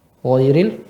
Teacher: Ya, gho keluarnya di ya, lisanul jazul lisan, akar lidah bertemu dengan langit lunak bagian belakang